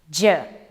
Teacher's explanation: Tongue blade at the back of the alveolar ridge. J is voiced.